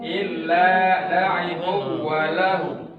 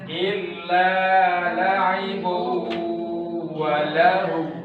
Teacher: Karena di sini idgham bigunnah, tanwinnya masuk kepada huruf waw dengan cara bigunnah, didengungkan.